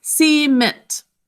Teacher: we end up kind of um putting the emphasis on the second syllable